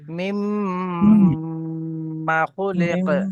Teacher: এখানে মা টান হবে না ভাই